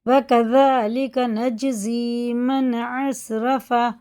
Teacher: اور ذال باریک ہے، کاف باریک ہے، اور یہ قلقلہ ہے، اسے کذالک نہیں کریں گے.